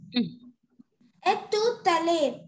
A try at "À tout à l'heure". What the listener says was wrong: Not et tout à l'heure. À tout à l'heure. No, dear, it's not a sound coming there. A sound. À tout à l'heure.